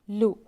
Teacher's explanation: زبان کے کنارے سائڈ کے داڑوں کو لگانے سے لام ادا ہوتا ہے. لام پر پیش ہے، نہیں کھینچیں گے.